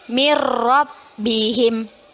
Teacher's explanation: nun sukun bertemu dengan roh hukum bacaannya idgham bilagunnah Apa arti bilagunnah yaitu dengan tidak berdengung